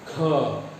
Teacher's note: ख बोलने में आपको ज़्यादा हवा फेंकना पड़ेगा, डबल फेंकना पड़ेगा। ख मतलब अगर 1 बैग हवा क में निकला तो 2 बैग हवा आपका जो है ख बोलने में निकला। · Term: महाप्राण